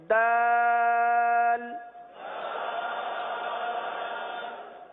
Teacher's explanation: زبان کی نوک اور اوپر کے دانتوں کی جڑ سے یہ حرف ادا ہوتا ہے